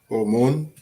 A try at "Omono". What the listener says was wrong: Omono. Omono. The O is hidden. Omono.